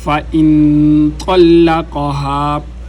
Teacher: فَإِن طَلَّقَهَا، نون پر اخفا، فَإِن طَلَّقَهَا لام کے اوپر زور لگا کر طلق کیونکہ مشدد حروف کو 2 دفعہ پڑھا جاتا ہے، ایک دفعہ ماقبل حرکت طا کے ساتھ اور ایک دفعہ اپنی حرکت کے ساتھ۔